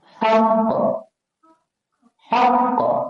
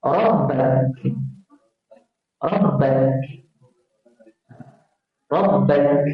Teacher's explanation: Kalau qaf paling belakang, kaf depan sikit.